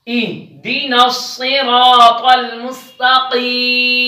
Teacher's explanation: را پر زبر ہے اس وجہ سے را موٹی پڑی جا رہی ہے